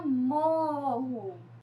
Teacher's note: A sílaba mais forte é a sílaba mo, né? Que é a que tem mais força, mais tonicidade.